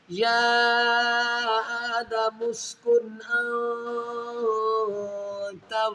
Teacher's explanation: نون ساکن کے بعد حروف اخفا میں تا ہے، تو یہاں غنہ کریں گے۔